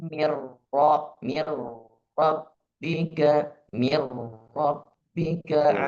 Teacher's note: sedikit ditahan ketika di idgham bila gunnah itu nun sukun bertemu dengan ro mirro atau idgham kamil.